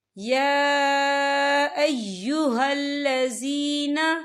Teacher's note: ولیکن انفسهم یظلمون یا ایہا الذین، یہ دیکھیں یا کے پر کھڑی حرکات ہے، اور اس پہ چھوٹی سی مد بھی ہے، تو ہم اسے 4 حرکت کے برابر کھینچ کے پڑھیں گے